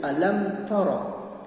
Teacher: mimati bertemu ta itu dinamakan idhar syafawi, bacaannya jelas